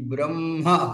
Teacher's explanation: ఉరసు నుండి అంటే వక్షసలము నుండి అంటే కంఠానికి ఇంకా దిగువ నుండి అది ఉచ్చరింపబడుతుంది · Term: ఉరస్యం